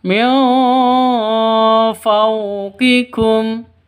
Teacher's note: nun mati bertemu dengan fa. Cara bacanya samar, didengungkan, siap-siap ke huruf fa-nya. Karena ini ikhfa hakiki, samar.